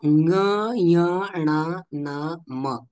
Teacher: ज्ञ य न म हे जे पाच व्यंजन आहेत हे व्यंजन या व्यंजनांचं स्थान मुखसहित नासिका आहे फक्त मुखही नाही आणि फक्त नासिका सुद्धा नाही